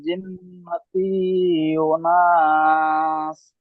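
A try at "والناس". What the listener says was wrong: মিনাল জিন্নাতি, তার নিচে জের হারাকাত, হারাকাত টান হয় না, এখানে টান হয়ে গিয়েছে। মিনাল জিন্নাতি। ওয়ানাস বলছেন, ওটি নুনের সাথে যুক্ত হবে। ওয়াও নুন হিসাবে আর ওয়ান, নুন আলিফ সিন যাবেন। ওয়ান নাস।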